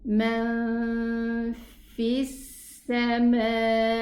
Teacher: The lam sukoon is not pronounced. There's nothing above it and there's a sukoon after it. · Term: lam shamsiyya